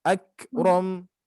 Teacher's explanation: sifat kaf ketika disukunkan dia ada sisa suara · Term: hamas